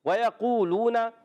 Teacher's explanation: واؤ مدہ کو ایک الف کھینچنا ہے اور قاف کو موٹا رکھنا ہے۔ لونا، یہاں پر بھی واؤ مدہ، قو میں بھی واؤ مدہ، لو میں بھی واؤ مدہ، دونوں کو ایک ایک الف کھینچنا ہے۔